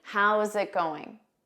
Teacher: Notice that zit. How's it going? You need to combine those sounds together.